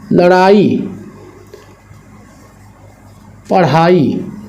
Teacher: जब इनका हम उच्चारण करते हैं तो जीभ को आगे की तरफ उठा के फेंका जाता है, उत्क्षेपण किया जाता है, इसीलिए इनको हम लोग कहते हैं उत्क्षिप्त व्यंजन।